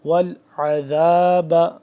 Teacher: عین کو نکالیں گے حلق کے درمیانی حصے سے تھوڑا کھینچ کے، کھچاؤ پیدا ہوتا ہے اس میں